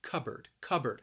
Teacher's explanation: the word is spelled with a P, but when I say it, it sounds a little more like a B sound.